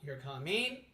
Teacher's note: say like you're coming like a statement like you're coming now say you're coming with a rising tone